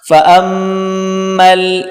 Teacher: حمزہ اور میم آپس میں ملا کر سختی کے ساتھ پڑھیں گے دبا کر